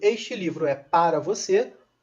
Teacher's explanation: Então, quando eu digo este livro é para você, para não tem acentuação nenhuma, não tem nenhuma tônica